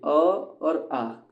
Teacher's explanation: अ और आ ये 2 होते हैं आपका कंठ्य वर्ण, ठीक है, कंठ से उच्चारित करते हैं हम इसे